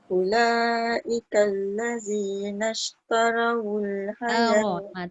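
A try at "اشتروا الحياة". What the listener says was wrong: Ta dengan ra jangan dia sama level. Tarawul, dia tak boleh tara. Taro. Ulaika allazina ishtarawul hayat. Taro. Jangan tarawul. Taro. Taro.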